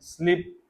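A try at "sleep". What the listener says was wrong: खींचिए ना फिर। अभी आप खींच नहीं रहे। हाँ, ई पे थोड़ा सा जोर देंगे और खींचेंगे, स्लीप। ये जैसे कि ये था ना टीथ, हाँ, ये वर्ड्स ऐसे हैं जिनको थोड़ा सा खींचते हैं, क्योंकि जाहिर बात है दो ई लिखे हुए हैं, इसीलिए तो लिखे हुए हैं कि खींचना है।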